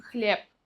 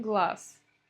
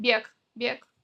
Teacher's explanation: Звонкие согласные на конце слова и иногда в середине слова тоже мы оглушаем, то есть не произносим их звонко. Например, хлеб пишем с «б», говорим хлеб.